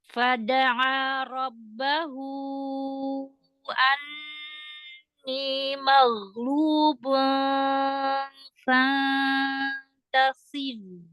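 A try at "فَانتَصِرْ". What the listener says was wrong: Huruf sodnya ya. Sod ada sofir ya. Fantasir, sir, tasir. Oke, dilatih huruf sod.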